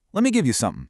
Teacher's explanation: The letter T is entirely omitted. It's just literally gone. Let me becomes lemme.